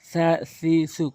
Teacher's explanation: নরম করে জিহ্বার আগা দাঁতের আগার সঙ্গে মিলিয়ে।